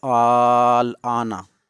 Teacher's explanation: اس میں صرف طول ہے، مد لازم میں صرف طول ہے، توسط نہیں اور نہ ہی قصر۔ اس میں صرف طول ہے، طول کی مقدار 5 الف ہے۔